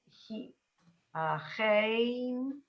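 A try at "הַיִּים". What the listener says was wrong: There's no ch. No, there's no ch. The hey. Haim.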